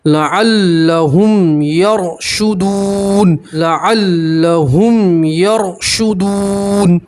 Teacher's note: را ساکن سے پہلے زبر ہے, را کو موٹا پڑھیں گے, پور پڑھیں گے, اور آپ یہاں وقف کریں گے ان کے اوپر زبر, آپ اسے جزم سے بدلیں گے, ٹھیک ہے.